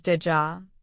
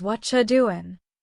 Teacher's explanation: Did you becomes did ja. What are you doing becomes what you doing. These are called connected sounds and they're everywhere in natural English.